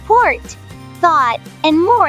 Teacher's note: This symbol represents the open mid-back rounded vowel, often found in words like port, thought, and more in many British English accents.